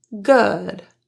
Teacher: The lips are only very slightly pursed or protruded and your tongue is in a very lax position. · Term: epsilon vowel